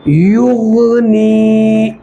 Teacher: یا مدہ ہوگا، اس لیے اس کو ایک الف کے برابر ہم کھینچ کر پڑھیں گے